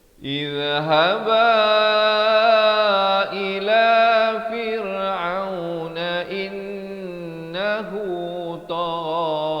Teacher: Jadi in itu didengungkan dua harakat.